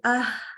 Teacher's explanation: kalau h ya itu dia akan mengeluarkan udara jadi dia membuka ya agak membuka pita suaranya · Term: huruf H